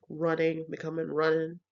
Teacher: AE G dropping is probably one of the most well-known features it involves the dropping of the final ing